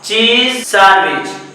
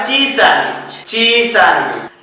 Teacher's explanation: Rule number 2, अगर दो consonant sound similar हो, एक नहीं हो बल्कि सिमिलर हो, तो भी दोनों वर्ड को कनेक्ट कर दिया जाता है। Z और S दोनों का साउंड सिमिलर है, जहां से Z निकलता है ऑलमोस्ट वहीं से S भी निकलता है, इसलिए दोनों का साउंड सिमिलर है, तो एक ही पढ़ा जाएगा, दोनों नहीं पढ़ा जाएगा।